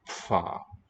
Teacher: Instead of going from closed to open to ta, if we slow that down, we get sa, sa. And if we do the same thing with the lips, instead of a smooth pa with quick release, it would be pfa, where there's a period of a fricative in the production of that